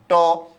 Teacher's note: জিহ্বার আগা আমাদের মূর্ধায় স্পর্শ হয় তাই এই ধ্বনিগুলোকে আমরা কি ধ্বনি বলি মূর্ধন্য ধ্বনি বলি